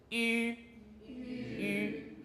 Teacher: Now we come to the front rounded. So the lips are rounded, the tongue's at the front.